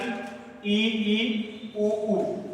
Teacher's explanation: उच्चारण करने पर मुख का सबसे कम खुलना, यानी ई, उ। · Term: संवृत स्वर